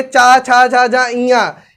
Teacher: चवर्ग में देखेंगे चा, छा, झा, झा, इया, ये 5 वर्ण आपके स्पर्श व्यंजन के आ जाते हैं तालब्य में